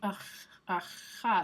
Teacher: That's a velar fricative, so that'd be aha.